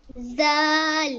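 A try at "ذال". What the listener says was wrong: ये जाल है, ये जा जोर से नहीं, ये लाइट सा हल्का सा नरमी से अदा करना है। ये वो वाली जाल है। अऊज़ु ज़ो ज़ो अऊज़ु, यू वाली जाल। जाल।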